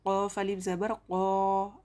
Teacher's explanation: क़ाफ अलिफ ज़बर क़ा, अलिफ मद्दा, एक अलिफ के बराबर खींच कर पढ़ेंगे।